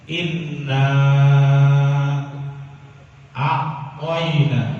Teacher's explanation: Inna asalnya hanya 2 harokat biasa dia, tapi karena bertemu dengan hamzah menjadilah dia panjang 4 harokat atau panjang sedang. Kuncinya paling gampang, asal bertemu dengan hamzah panjang 4 harokat atau panjang sedang.